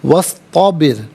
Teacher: و استبر، واو پر زبر ہے، استبر صاد ساکن کے ساتھ ملائیں گے، درمیان میں سے الف یعنی حمزہ کو حذف کیا جائے گا۔ را ساکن ما قبل با کے نیچے زیر، را ساکن کو باریک کر کے پڑھا جائے گا